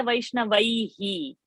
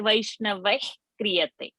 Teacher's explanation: So that visarga has to be lifted and dropped.